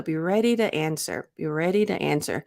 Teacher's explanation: the T became a flap T. So it was not overly aspirated